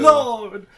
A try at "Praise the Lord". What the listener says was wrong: Instead of Lord, you want to do Laud.